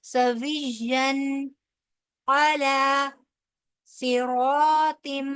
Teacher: صاد جو ہے حروف مستعلیہ میں سے ہے، موٹا پڑا جائے گا. را کے اوپر کیونکہ زبر ہے اور اس کے آگے جو ہے الف مدہ ہے، لہٰذا دو حرف برابر لمبا بھی ہوگا اور پر بھی پڑا جائے گا.